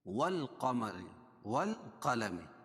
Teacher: یہ لام پڑھی جا رہی ہے تو حروف قمریہ میں سے ہے، قاف کو موٹا پڑھیں گے